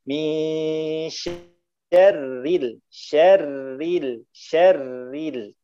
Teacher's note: Tapi tidak, ro bertasydid, lihat ro-nya dalam keadaan apa. Kalau dalam keadaan kasroh, maka tipis semua